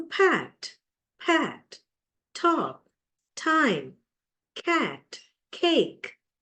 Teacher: they are aspirated at the beginning of a syllable